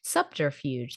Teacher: Just the BT kind of becomes a PT.